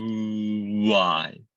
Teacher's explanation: The W sound is an oo sound that opens up to another vowel, right? That is technically what's happening, but the tongue is doing exactly the same thing.